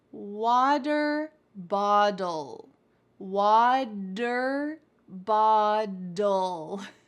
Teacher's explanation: The T in water actually sounds like a D in American English. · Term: T's change to D's